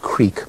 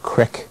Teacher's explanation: You go from E to I, as in we have the word creek, but it's often pronounced crick.